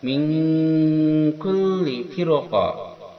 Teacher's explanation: Ini ikhfa ab'ad, mendekati eng, berdengung ya, itu mendekati eng, yang mana dengungannya lebih dominan daripada samarnya.